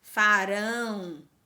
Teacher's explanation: a sílaba mais forte é a última então a palavra oxítona